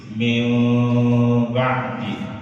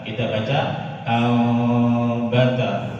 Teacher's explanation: Jadi ada samarnya, tidak ditutup rapat.